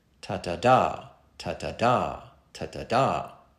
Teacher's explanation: much of it consists of two unstressed syllables followed by single stressed syllables.